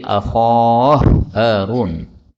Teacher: Kemudian akhahu Harun, ini hak ketemu hak maka boleh idgham menjadi akhah Harun